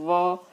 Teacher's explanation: ओष्ठ मिल रहा है, ओठ दांत से मिल रहा है। व जैसे दंतोष्ठ कहते हैं।